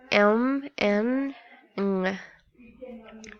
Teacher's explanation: the airstream is allowed to flow out through the nose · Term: Nestle's